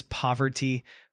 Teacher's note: The word poverty is pronounced as poverty with the emphasis on the first syllable.